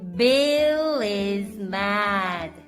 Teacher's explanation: Bill is mad. 할 때 단모음 A니까 입을 크게 벌려줘야죠